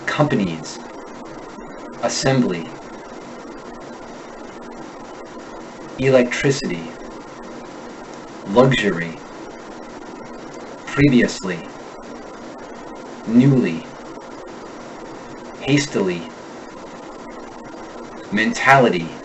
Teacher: Americans finish the sound with a long E, as in key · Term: unstressed long E